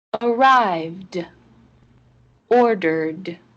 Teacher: the ed in arrived and ordered ended with a d sound